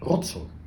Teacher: the I becomes kind of like a J sound and goes to the EN.